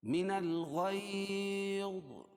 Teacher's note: یا ساکن سے پہلے زبر ہے اس لیے یا لین ہوگا، اس میں نرم آواز کے ساتھ جلدی پڑھیں گے